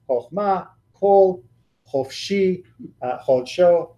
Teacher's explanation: In a closed and unaccented syllable, it has a short O sound.